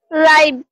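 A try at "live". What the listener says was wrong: ও, আই আসছে কে থেকে, ই, লিভ, ই, আই না তো, ই, লিভ।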